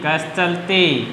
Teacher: अब देखो, विसर्ग के बाद में वर्ग का पहला दूसरा वर्ण आ रहा है और च आ रहा है, तो विसर्ग के बाद में च आए तो विसर्ग का क्या बन जाएगा? तालव्य श हो जाएगा। जैसे कि इसको लिखेंगे क आधा से चलती, कस चलती।